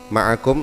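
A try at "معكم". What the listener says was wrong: ma'kum ya. Ya, ma'kum, bukan ma'akum. Kenapa? Karena menyesuaikan ini ya. Menyesuaikan bentuk itu. Untuk syair.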